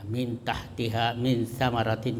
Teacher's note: Itu bacanya samar-samar ikhfa. Ya, antara izhar dan idgham